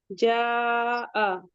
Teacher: اذا الف مدہ ہے، 2 کاؤنٹ پڑھیں گے۔ جاء مد متصل، اسے 4 to 5 کاؤنٹ پڑھیں گے۔